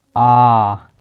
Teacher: दो मात्रा का समय लगे उसे बोलेंगे दीर्घ स्वर